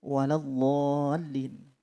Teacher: Kemudian ketika mengucapkan kalimat waladdallin, maka bibir tidak boleh mencucu karena dhad tersebut adalah berharokat fathah